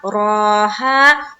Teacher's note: रा को पुर करके बोलेंगे, खड़ा जबर है, रा को पुर रखेंगे और एक अलिफ की मकदार के बाकदर खींचेंगे भी। उसके बाद हा में पूरा पढ़ना है अलिफ मद्दा के साथ।